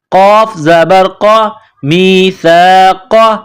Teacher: وَإِذْ أَخَذْنَا، نون الف زبر نا، وَإِذْ أَخَذْنَا مِيثَاقَكُمْ، میم کو یا کے ساتھ ملانا ہے، یہ سا ہے، زبان کا سرہ تھوڑا سا باہر نکالیں گے، سا کو پڑھتے وقت سا الف زبر سا، می سا. قاف نقطوں والا قاف ہے، اس کو موٹا کرنا ہے